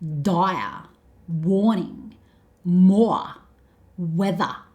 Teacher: Australians don't tend to pronounce the letter R, like the Americans do.